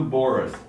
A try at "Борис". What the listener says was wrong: Oh, it's on the last syllable, like Борис